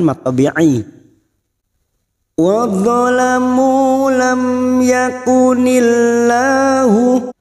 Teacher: mim sukun bertemu ya Idhar syafawi dibaca jelas tanpa mendengung